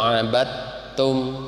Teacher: dal masuk ke ta. Ini disebutnya idgham juga. Idghamnya mutaqarribain.